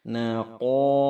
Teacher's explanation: huruf qaf dalam pangkal lidah